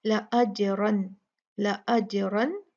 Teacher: زیادہ غنہ نہیں، بس اتنا ہی جتنا کہ نون کی طبیعت میں غنہ ہے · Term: اظہار